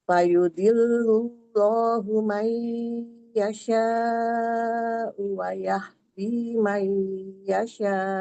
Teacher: Ada alif lam jalalah dibaca tebal karena sebelumnya ada huruf yang berharakat dumah